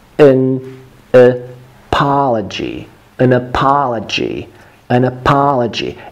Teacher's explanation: this word apology, is very important because you have 3 schwas here, 3 безударных гласных.